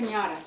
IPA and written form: pɪnˈjɑːtə (piñata)